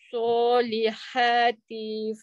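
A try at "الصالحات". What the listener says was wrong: jangan panjang T tu. T ah, terpanjang tu.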